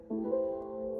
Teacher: I'm going to demonstrate the articulatory movement for the CH sound. It's a post-alveolar affricate